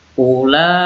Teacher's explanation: perhatikan u-nya ini pendek ya. Waw ini dianggap tidak ada, jadi pendek.